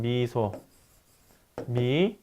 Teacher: 입을 거의 다물고 내는 소리로 입술을 양옆으로 펴고 전설, 앞쪽 혀를 경국에 바짝 접근시켜서 조음하는 소리들을 얘기합니다. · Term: 전설평순 고모음